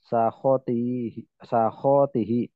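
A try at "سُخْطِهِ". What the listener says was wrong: Suh. Bukan sahot. Suh. Suhtun.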